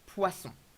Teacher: Very careful with the pronunciation of poisson. Pois, open, s, the snake sound. On, nasal sound, not poison. Very common mistake.